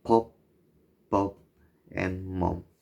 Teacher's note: bilabials, formed with two lips